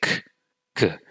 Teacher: You can feel the back of your tongue touch the soft palate or the velum when you say k, g. It's a very slight touch, but it is there. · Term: plosive velar consonants